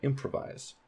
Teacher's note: We don't say that when we speak. We say improvise. So that primary stress is on im.